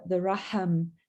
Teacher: So the sound is in Arabic, it's more of a breathy sound.